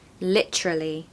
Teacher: you stress the first syllable and it gives like drama and passion and intensity to the word